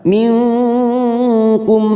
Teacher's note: nun sukun bertemu Kaf warna hijau namanya Ikfa Hakiki kita samarkan tiga harakat